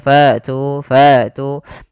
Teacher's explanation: ketika melafalkan hamzah fa tu, ya, nafas tertahan dan suara pun tertahan. Kemudian pelafal tu di sini ada mad tabi'i, yaitu ditandai dengan dhammah bertemu dengan huruf waw, panjangnya 2 harokat. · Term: hamzah yang sukun